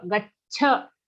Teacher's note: Okay, we'll say gach. We're giving a dvitva cha sound because ga has an aghat, so we'll give a double cha sound. Gacha, the cha is then joined to a cha, gacha.